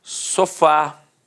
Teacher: Repare que a sílaba tônica é a última e é terminada de fato em A.